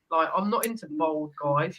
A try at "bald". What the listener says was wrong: Sounds like you're saying I'm not into bold guys. Bold. Bald.